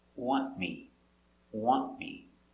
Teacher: NT before a consonant, the T is silent. Want. The tongue goes up a little bit, but you don't hear it.